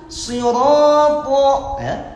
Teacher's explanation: perhatikan ro-nya tafkhim ro